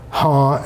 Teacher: you can get both the nasal and the glottal feature in the same syllable. Ha has both glottal stop and a nasal.